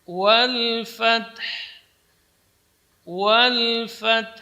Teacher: Di sini dua sukun, yaitu ta dengan ha. Dan kedua-duanya harus jelas. Fath, kemudian pertama ta, kemudian kedua ha.